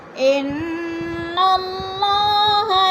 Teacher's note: انا کی نون مشدد ہے، سختی سے جما کر پڑھیں گے